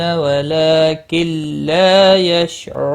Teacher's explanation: نون ساکن کے بعد حرف یرملون کا لام آیا ادغام ہوگا لیکن گناہ نہیں ہوگا